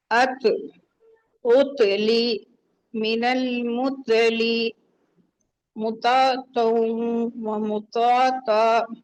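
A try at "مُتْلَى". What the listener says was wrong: अब क्या मुतो ता बोल दिया आपने, मुतो सही बोला, आखिर में ता बोल दिया। तो और ता दोनों एक ही है ना, दोनों तो ही हैं, दोनों हैवी हैं। आपने एक को हैवी एक को लाइट बना दिया, ठीक है, नो प्रॉब्लम।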